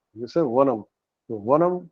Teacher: The upper row of your teeth touches the lower lip, then it is va